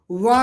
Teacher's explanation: वा का उच्चारण स्थान क्या है? वकारस्य दंतोष्ठम, दंत प्लस ओष्ठ